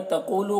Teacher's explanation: قوف کو پر پڑھیں گے، یہاں پر واو مدہ ہے، ایک الف کے برابر کھینچیں گے